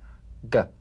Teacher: yeah yeah yeah carbonate the voiced tongue back plosive consonant G place the back of the tongue in gentle contact with the soft palate let the tongue spring away play this drum beat on the springing action of the back